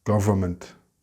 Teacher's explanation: in European English, the R is very soft and we don't pronounce the N at all.